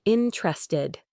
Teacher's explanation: Another common occurrence is elision or dropping sounds where certain sounds are often dropped or significantly reduced in natural speech for ease of pronunciation. Interested frequently loses its second e sound becoming interested.